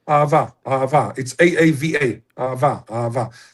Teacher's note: So there is no glottal stop. Just a little bit maybe at the beginning. We don't say hey.